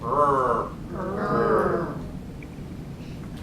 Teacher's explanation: The R is formed in the middle of the mouth.